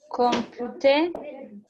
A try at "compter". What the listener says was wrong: Compter, P is silent.